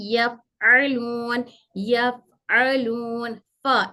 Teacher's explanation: ऊपर के दो दांत नीचे की होठ की तरी से मिलकर हरफ फा अदा होता है